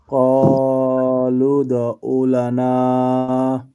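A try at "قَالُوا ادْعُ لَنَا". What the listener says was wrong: আচ্ছা মাশাআল্লাহ আইনটাকে একটু সুন্দর করব।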